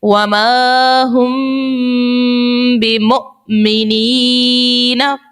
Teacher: اب مثال سے سمجھتے ہیں، مثال ہمارے پاس ہے وَمَا هُم بِمُؤْمِنِينَ، میم ساکن ہے، میم کے اوپر علامت جزم ہے، میم ساکن کے بعد دیکھیے لفظ با آ گئی ہے، تو یہاں پر ہم نے لگانا ہے اخفاء شفوی کا قاعدہ اور یہاں غنہ بھی کریں گے